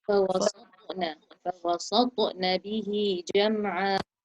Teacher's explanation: It was too light, so you need to echo the sound of the ta so that we can hear it and recognize it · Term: qalqala